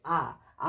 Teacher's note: যে স্বরধ্বনি উচ্চারণকালে জিহ্বা নিচে নেমে আসে তাকে বলা হয় নিম্ন স্বরধ্বনি অর্থাৎ যে স্বরধ্বনি উচ্চারণ করতে গেলে আমাদের জিহ্বাটা নিচের দিকে চলে